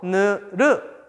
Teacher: 혀 끝과 윗 잇몸 사이에서 나는 소리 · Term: 잇몸 소리